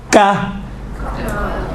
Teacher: سخت والی جگہ سے ٹچ ہوتی ہیں زبان کی جڑ تو کاف نکلتا ہے